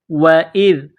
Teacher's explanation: وَإِذْ قُلْنَا واو زبر و حمزہ ذال زیر اذ. وَإِذْ ذال کو نرم کرنا ہے، زبان کا سرہ تھوڑا سا باہر نکالیں گے. ذال کو پڑھتے وقت حمزہ کو ذال کے ساتھ پلس کرنا ہے.